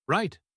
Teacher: You might hear them say right in a very distinct way, dropping their voice at the end.